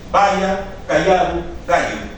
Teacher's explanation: el fonema lateral alveolar ya se transforma por otro que es también palatal, pero en este caso ya no es lateral.